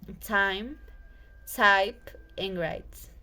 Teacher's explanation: At the beginning of the vowel, the jaw is dropped low. The tongue is also low, and the tongue tip touches the back of the bottom from the teeth. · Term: I diphthong